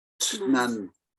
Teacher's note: So when we say that cliff, it's almost like leaving out a vowel altogether and just go straight into tnan